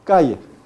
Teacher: En el español castellano peninsular y en algunas zonas de Sudamérica, parte de la zona andina de Ecuador, se conserva, aunque cada vez menos, un fonema que antiguamente era de uso general en la península. Este fonema tiene como alófono principal un sonido lateral, palatal y sonoro.